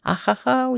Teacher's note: Х бізде сөз, біздің қазақ тіліне келгенде х тілдің ортасымен айтылмайды, тілдің артымен айтады. Ахахау деп, ахау сәулем деп айтамыз.